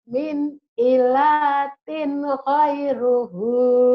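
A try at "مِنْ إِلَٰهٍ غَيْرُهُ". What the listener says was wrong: Kenapa jadi min ilatin, Bu? Kalau ada titiknya. Iya kan gak ada titiknya, Bu. Min ilahin ghairuhu.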